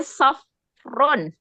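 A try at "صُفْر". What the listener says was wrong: Sufrun, doma. Ya, sufrun. Ya, fu'lun wazannya.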